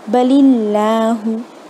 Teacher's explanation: अगर अल्लाह के पहले कसरा होगा तो फिर उसे बारीक पढ़ेंगे